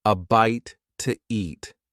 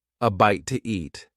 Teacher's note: In fast speech, when one word ends in a vowel sound and the next one starts with a vowel sound, we often add an extra sound to make it easier to say. In this case, the extra sound is W